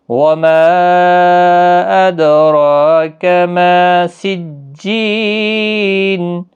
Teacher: وما مد منفصل ہے، دال ساکن پر قلقلہ ہوگا